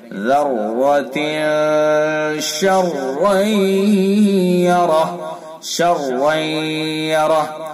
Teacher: ادغام ناقص، ادغام ناقص بالغنہ، غننے کے ساتھ